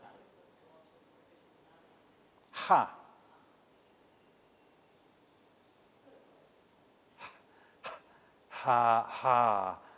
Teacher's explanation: this H here is an independent letter A voiceless glottal fricative